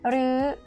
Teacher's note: หรือ is high tone in conversation, but it actually comes from the word หรือ rising tone means or.